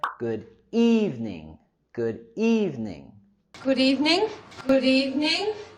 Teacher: También queremos subir la entonación en la primera sílaba